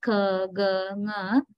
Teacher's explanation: back of the tongue rises and touches the soft palate, right? So in such situations, when we produce the sounds like k, g, ng, back of the tongue rises and touches the soft palate.